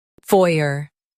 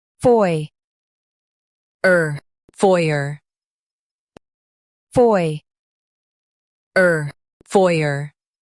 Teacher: In US, stress foy.